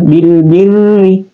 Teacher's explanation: tarqik yang tipis ya Bil bir cuma ditekan ya Bil birri ditekan tekan seakan-akan dua ra di situ